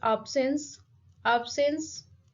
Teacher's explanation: the stress is on the very first syllable